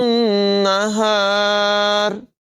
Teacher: گی۔ أَن تُدْرِكَ الْقَمَرَ وَلَا اللَّيْلُ سَابِقُ النَّهَارِ، یہاں پر بھی را باریک ہوگی اور نون مشدد میں غنہ کر کے پڑھیں گے